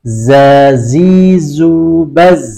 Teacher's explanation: huruf dza ada hembusan udara meskipun kemudian dia ditahan dan getaran pada tenggorokan